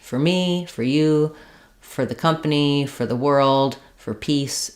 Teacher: a reduced for becomes fur in fluent speech.